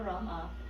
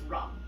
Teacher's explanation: So in Hindi, they drop that last A.